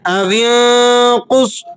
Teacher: قاف اور صاد یہ دونوں حروف مستعلیہ میں سے ہے، پر کر کے پڑھے جاتے ہیں